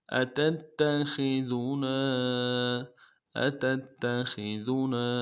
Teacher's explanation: تا کو اگلے تا کے ساتھ ملانا ہے. تا کے اوپر تشدید ہے، زور دیں گے. اگلے تا کو نون سے ادا کرنا ہے.